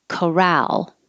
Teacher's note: the stress is on the second syllable